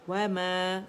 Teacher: تو اس کو 2 کاؤنٹ کے لیے میم کی آواز کو اوپر لے کے جائیں گے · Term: مد طبیعی